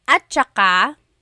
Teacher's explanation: technically it's spelled at saka, but when it's pronounced, remember the TS combination, it makes that ch sound.